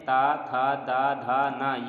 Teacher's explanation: ये सभी अक्षर जो हैं दंत से बोले जाते हैं